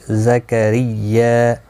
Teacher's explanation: را زیر کی وجہ سے باریک پڑھا جائے گا، زا کو سختی کے ساتھ ادا کریں تاکہ زا ادا ہو جائے.